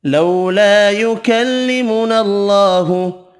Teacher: اللہ کا نام والا لام زبر کی وجہ سے پر پڑھیں گے